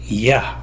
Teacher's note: 야 소리를 아 소리와 같다고 보고 다만 이에서 시작한다